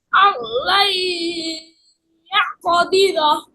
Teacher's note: ইদগম বা গুন্না, নুন সাকিনের পর ইয়ে আসছে, হ্যাঁ, গুন্না করে পড়তে হবে